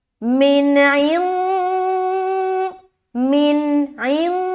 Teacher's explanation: اخفا کر رہے، ناک میں آواز کو چھپا رہے